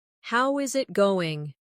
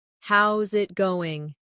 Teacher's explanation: A native speaker would say, "Hey, how's it going?" Notice that they don't always say every word slowly and clearly. Instead, how is it going becomes how's it going? The is disappears and the final G in going often softens. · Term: connected speech